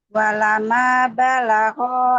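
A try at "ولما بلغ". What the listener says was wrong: Nah, itu ditahan dulu. Walamma.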